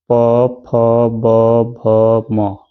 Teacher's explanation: प फ ब भ म और उपाद मानी यह शब्द मिलाकर किससे उच्चारित होते हैं ओस्ट से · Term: प वर्ग